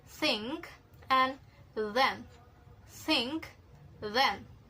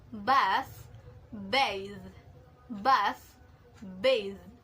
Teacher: the tip of the tongue is located behind the upper teeth, and it is also creating a friction, a hissing sound, and the airstream isn't completely blocked, so the sound can continue. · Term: dental fricatives